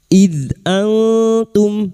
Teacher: nun sukun bertemu ta ikhfa hakiki. Nun sukun dibaca samar dan mendengung selama 3 harokat.